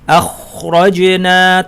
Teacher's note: আমরা যখন খ বলি আখরাজনা, তখন আসলে আমরা বাতাস প্রবাহিত হতে দিচ্ছি, সুতরাং খ হচ্ছে হামস বৈশিষ্ট্যের অধিকারী।